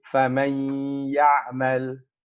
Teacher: We imagine there's a shadda on that ya, and we do idgham.